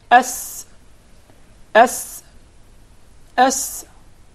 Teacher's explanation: did you notice the whistle while pronouncing the letter seen